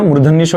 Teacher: मूर्धन्य शो यानी कि मूर्धा जीभ घूमेगी